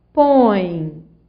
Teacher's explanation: Em põe, você vai da vogal O para a semivogal E. Você vai da mais forte para a mais fraca. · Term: ditongo decrescente